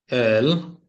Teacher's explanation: জিহ্বাটা একটু হোল্ড হয়ে বাঁকা হয়ে, সেটা হচ্ছে উপরের দাঁতের পাটির পিছনে লাগবে